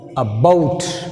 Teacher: See here, a is weak prefix, so that's why you take stress falls on second syllable. Stress falls on the second syllable here.